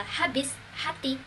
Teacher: Konsonan frikatif glotal itu mencakup fonem h